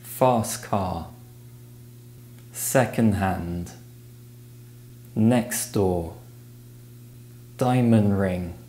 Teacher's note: The t and d sounds may be removed from the end of words in phrases such as fast car, second hand, next door, diamond ring.